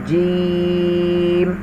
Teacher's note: حروف شاجریہ زبان کے درمیان اور تالو کے درمیان سے ادا ہوتے ہیں۔ جب آپ جیم کو پڑھیں گے آپ کو محسوس ہوگا کہ واقعی جب آپ پڑھ رہے ہیں تو آپ کی زبان کا درمیان اور تالو کا درمیان یہ دونوں چیزیں مل رہی ہوں گی جب آپ پڑھیں گے اسے، جیم۔